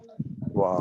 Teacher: ওয়াও উচ্চারণে ঠোঁট দুটোর সংস্পর্শ হবে না, জাস্ট বাতাস ওয়া, থেকেই গোল হয়ে উচ্চারিত হবে ওয়াও।